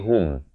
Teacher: Ha baris dhammah bunyi hu, bukan bunyi ho. Bila bertemu mim jadi hum.